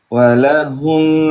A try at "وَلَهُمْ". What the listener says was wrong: هنالك ثقل تحسسني بثقل ولهم لا تحسسني بثقل